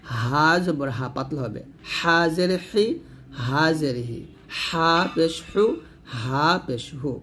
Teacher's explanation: হলকে মাঝখান থেকে চাপ দিয়ে বলবেন, এটা পাতলা করে বলবেন